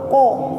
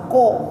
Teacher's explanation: Jadi ngangkat pangkal lidah. Jadi pangkal lidahnya itu diangkat ke atas ke langit-langit sehingga bacaan huruf itu menjadi tebal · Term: isti'la